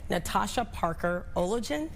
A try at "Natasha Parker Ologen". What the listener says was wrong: Ogeen. The L is silent. Yes, Ogeen.